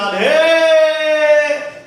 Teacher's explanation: ए पर बलाघात कर दिया तो ए पलुत हो गया